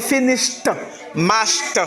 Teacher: avec finish, mash, le ED se prononce t